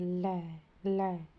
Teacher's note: पार्श्विक व्यंजन ल के उच्चारण में सांस जीभ के दोनों पार यानी बगल से निकलती है। ल जीभ की दोनों साइडों से निकलती है हवा।